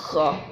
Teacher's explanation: ہم گلے میں خراش پیدا کر کے اس کو ادا کرتے ہیں، خا۔ اب تینوں کو میں اکٹھا یکے بعد دیگرے بولتا ہوں تاکہ آپ کو اس کی جو ڈفرینسز ہیں، جو اس کا فرق ہے، وہ پتہ لگ جائے۔